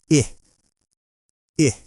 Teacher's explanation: To make this sound, your mouth should be very relaxed. Your lips are neutral, not smiling, not rounded. The sound is quick and soft. It comes from your throat, and you don't hold it for long. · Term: short i sound